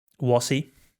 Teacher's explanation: The English people are right now developing a new way of pronouncing the R sound, which is more of a W.